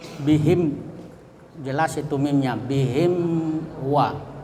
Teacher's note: Jadi izhar itu harus jelas mimnya. Kemudian syafawi itu bibir bertemu, ya, antara atas dan bawah sehingga mulut tertutup. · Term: izhar syafawi